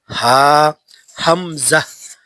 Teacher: এক নাম্বার মাখরাজ হলকের শুরু হইতে, আবার বলেন, হলকের শুরু হইতে উচ্চারিত হয় হামজা। হা, হামজা। হা একবারে নরম।